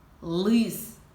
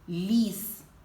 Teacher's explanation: в першому слові звучить твердо лис у другому м'яко ліс